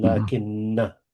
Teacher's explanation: the hamza of ana, I, is dropped, and the noon of lakin, but, is contracted with the noon of ana, I, and this results in the shadda on the noon of lakinna.